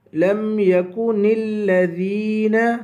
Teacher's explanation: ذال کو یا سے ملائیں گے، یا کو ایک الف کے برابر کھینچ کے پڑھیں گے